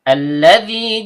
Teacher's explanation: Kemudian terdapat alif lam syamsiyah lamnya ujung lidah bertemu dengan langit-langit bagian depan. Zal ujung lidah bertemu dengan ujung gigi seri atas.